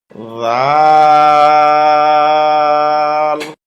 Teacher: নরম হবে, জিহ্বার আগা উপরের দাঁতের আগায় লাগবে